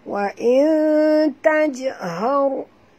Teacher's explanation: ra ini bila dia mati kena baca tebal ya. Jangan baca wa tajhar, bukan har tapi har.